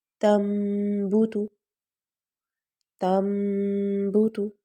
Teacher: تنبت، تنبت، نون کی آواز تن ہوتی ہے اور یہ ہے تم، یعنی میم میں ہم بدل دیں گے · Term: اقلاب